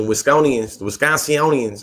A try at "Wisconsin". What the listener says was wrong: Wisconsin. You was trying to add 6 more syllables.